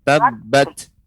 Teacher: ini tak sukun, maka dia ada keluar nafas sedikit. Tabbat ya, karena dia sifatnya hamas ya.